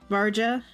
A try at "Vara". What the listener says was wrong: think it's a silent J. I think it's honestly Vara.